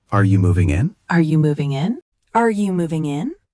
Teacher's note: Notice the rising tone at the end. It shows a question.